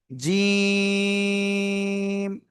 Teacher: জিহ্বার মধ্যখান তার বরাবর উপরে তালুর সাথে লাগিয়ে উচ্চারণ করতে হবে। জিম। শক্ত করে 3 আলিফ টান হবে।